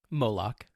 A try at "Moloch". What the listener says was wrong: Moloch. The emphasis on the wrong syllable. Moloch.